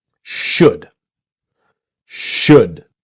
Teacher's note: The important thing is the L is silent. A lot of people see the L and want to say should.